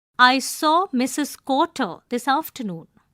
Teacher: Use falling inonation towards end of the sentence as declarative sentences usually have falling inonation. Stress the words Mrs. Quarter. Remember stress does not mean to say the word louder than others. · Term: sentence stress